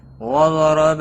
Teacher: ضاد حروف مستعلیہ میں سے ہے، پور پڑا جائے گا۔ را زبر کی وجہ سے پور پڑا جائے گا۔